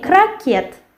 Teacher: And in Russian it will be крокет, and we write T and we pronounce T. And the stress falls on the last syllable.